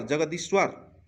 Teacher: जैसे जगत धन ईश, त का द में परिवर्तन। देखिए यहाँ पे त का किस में परिवर्तन हो जाएगा, द में। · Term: व्यंजन संधि